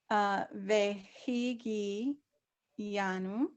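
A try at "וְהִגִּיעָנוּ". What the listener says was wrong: Anu. You don't hear the yud. This ve, he, gi, nu. You got to make sure that you're pronouncing each one of them the way they should.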